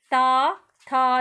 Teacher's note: मेरी जीभ जो है बच्चों दांतों के पिछले हिस्से को टच कर रही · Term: दंत्य वर्ण